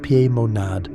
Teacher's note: The Mo is nasal, like Monas. The nad ends with a hard stop. This is a percussive sound, rhythmic, creating a staccato vibration rather than a sustained resonance. · Pimonad is pronounced Piemonad, with equal emphasis on all 3 syllables. The P is sharp, almost like a whistle.